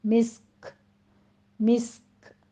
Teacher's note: مسک میں سین بھی ساکن ہوگا، کاف اگر یہاں پہ وقف مطلق ہے کاف ساکن کرنا ہے تو پھر کاف پر بھی ہمس ہوگا